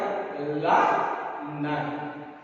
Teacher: நம் நாவின் நுனி மேல்வாய் பல்லின் அடியை தொடுவதால் ல ந இந்த 2 எழுத்துக்கள் கிடைக்கின்றன.